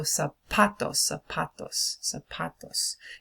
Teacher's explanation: On the word zapatos, the pa gets a lot of stress on that.